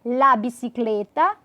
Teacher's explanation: la bicicleta, com som de E mais fechado